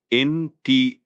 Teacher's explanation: The stress is on that second syllable, teg.